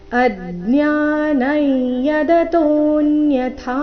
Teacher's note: ಕೊನೆಗೆ ಥಾ ಮಹಾಪ್ರಾಣ ದೀರ್ಘ